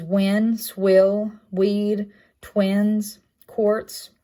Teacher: voiced labial velar glide · voiced, a labial velar glide, in words such as win, swill, weed, twins, quartz. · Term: lowercase w